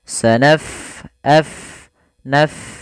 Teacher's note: Pada lafal bacaan sanafrugu, fa-nya kita alirkan nafasnya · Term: huruf fa